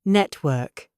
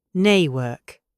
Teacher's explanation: Notice the T is gone. I cut the sound in my throat. · This is the glottal T. It gives the British accent its punchy staccato rhythm.